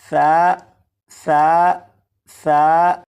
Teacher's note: سا کو نرمی سے پڑھیں گے، یعنی سی ٹی کی آواز کے بغیر پڑھیں گے